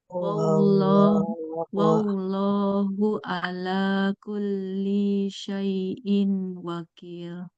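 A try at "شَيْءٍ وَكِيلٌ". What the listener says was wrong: Syai'in. Nah, dengung. Syai'in wakil.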